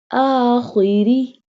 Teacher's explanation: Here ra will not be bold because ra has a kasra sign.